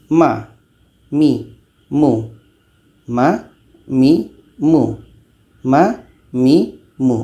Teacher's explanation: Ma ini letaknya pada dua bibir dengan tanpa ada tekanan.